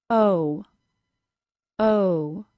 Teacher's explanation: The long O is a two sound vowel. To create this sound, begin with your tongue low in the back of your mouth. Then the tongue rises at the same time as the lips close into the same position as a W sound. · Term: 2-sound vowel